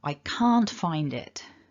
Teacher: because that d comes before a vowel sound it kind of flows together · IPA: /ɑ:/